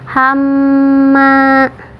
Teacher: Nah, hamma di atas mim ada tasydid, hukumnya gunnah. Tahan dulu 2 harokat sampai masuk ke hidung, nah baru melanjutkan.